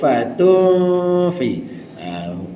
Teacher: Gigi kacip atas menyentuh bibir bawah. Dengungkan 2 harakat.